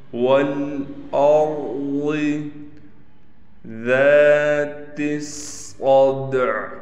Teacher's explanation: والارض، واو کو لام سے ملائیں گے، اس حمزہ کو بھی اس را سے ملائیں گے، را موٹا پڑھا جائے گا، ضاد بھی موٹا پڑھا جائے گا۔ والارض ذات الصدع، ذا کو تھوڑا کھینچیں گے بھی ایک الف کی مقدار۔